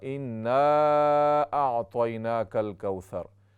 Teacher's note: इन्ना जो पहली आयत में इन्ना, वहाँ पर अलिफ है, मद भी है, गुन्ना भी होगा।